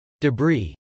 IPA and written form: dəbrˈi (debris)